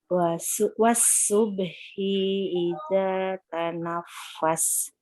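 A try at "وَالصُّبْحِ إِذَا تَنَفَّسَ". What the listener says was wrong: Nah, kalau nggak ada panjang, langsung pindah. Wasubhi idza. Jangan idza, jangan.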